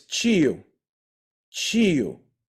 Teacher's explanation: most people say tio in Portuguese from Rio is Chio